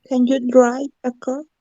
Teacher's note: Yes no questions, la entonación sube.